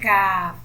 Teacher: اب ہم اگلے مخرج کی طرف چلتے ہیں جو کہ ہمارا مخرج نمبر 6 ہے۔ قاف کے مخرج سے ذرا ہٹ کر جب ہماری زبان کی جڑ منہ کی جانب تالو سے لگے تو پھر ایک حرف ادا ہوتا ہے کاف۔ کاف باریک حروف ہے اور اس کو ہم باریکی سے ہی پڑھتے ہیں۔